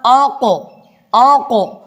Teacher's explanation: یہاں پر قاف کے اوپر سکون ہے، قاف ساکن ہے، تو اسی لیے یہاں ہم قاف میں ایک جنبش پیدا کریں گے، ایک چھوٹا سا جھٹکا دے دیتے ہیں، یہ قلقلہ ہوتا ہے۔